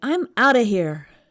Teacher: I noticed they said out of quickly. So it almost sounds like one word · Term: outa